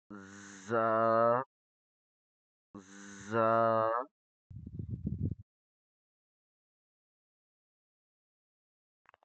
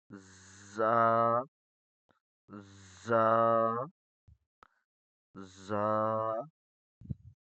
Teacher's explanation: اوپر والے اور نچلے دانتوں میں فاصلہ ہوگا. اوپر والے دانتوں میں اور نچلے والے دانتوں میں فاصلہ ہوگا. زا میں سیٹی کی آواز ہوگی. زا میں سیٹی کی آواز ہوگی.